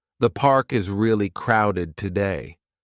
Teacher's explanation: The falling tone at the end makes it clear this is a comment, not a question.